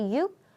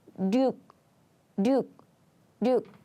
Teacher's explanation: if you use 육 at the beginning of the word, we just say 육. But when this 육 comes in the middle of the word, we often pronounce it like 륙